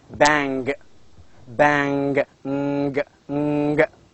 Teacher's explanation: the back part of the tongue touches the area which is called as velium, and the production, the result is ing, as in bang, bang, ng, ng.